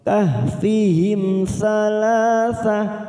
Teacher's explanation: Kahfihim mim sukun kita baca jelas tanpa mendengung karena bertemu sa, namanya bacaan idhar safawi. Kahfihim salasa, salah fathah berdiri atau alif kecil kita panjangkan 2 harokat.